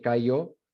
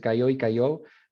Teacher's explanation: No hay contraste entre la Y ortográfica y la ella ortográfica. Cayó suena igual que cayó, entonces cayó y cayó, mientras que en Madrid es cayó y cayó. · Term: yeísmo